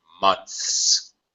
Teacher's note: you have to stick your tongue out of your mouth top teeth then slide it back to the position for the S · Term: TH sound